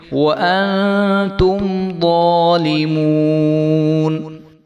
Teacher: تو اس کو وأنتم نہیں کریں گے بلکہ وأنتم ظالمون. ضا کو جو ہے خوب موٹا کر کے پڑھیں گے اور ایک الف کے برابر لمبا کر کے پڑھیں گے